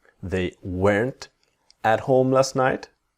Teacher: not is weren't but of course the t is silent